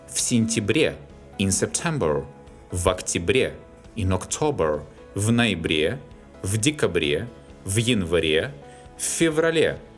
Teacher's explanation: The names of autumn and winter months are stressed on the ending.